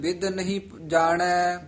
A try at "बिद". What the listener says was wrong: बिद कसके नहीं बोलना पोला ही बोलना बेद।